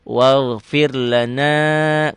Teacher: Fir, rohnya dibaca tipis. Kenapa? Roh mati. Sebelum roh mati baris di bawah.